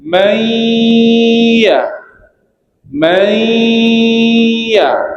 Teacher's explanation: Contohnya Ini macam idgham. Nun mati masuk pada ya.